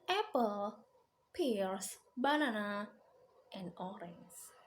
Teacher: the stress is rising, rising, rising, and falling